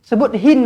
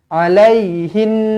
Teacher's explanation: sebut hin macam biasa, lepas tu lamakan yang belakang tu je, dengung dia je. Alaihin.